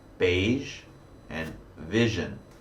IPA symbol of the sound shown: ʒ